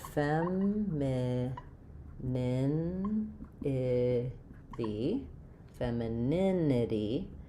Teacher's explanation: we're stressing on the nin syllable. We do have a clear vowel for the e in fem just like in um uh men or them.